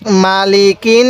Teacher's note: অনেকেই মিমের মধ্যে টান দিয়ে থাকি না টান দিব না